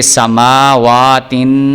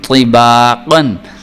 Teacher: یہ تا اس کو باریک پڑھنا ہے اور طا اس کو موٹا کر کے پڑھنا ہے